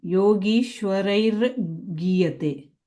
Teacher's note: you're saying gri, it's just gi